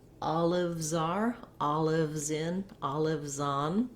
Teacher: i can put my z sound on the next word